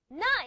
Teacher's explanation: Na is an alveolar nasal. · You have the tip of the tongue touching the alveolar ridge. Nasal cavity is open.